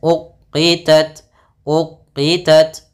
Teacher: di sini ta sifat Hames dan sifat syiddahnya langkah pertama syiddah dulu baru hamsnya